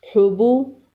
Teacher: ح حلق کے درمیان سے ادا کریں گے